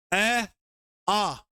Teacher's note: ए आ, ये कंठ से बोले जाएंगे